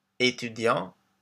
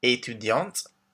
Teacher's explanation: étudiante for women, with the T pronounced at the end